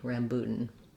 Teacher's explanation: So there's maybe a little bit of secondary stress there because it is a clear vowel. And then this last syllable is very short. We don't do anything for that A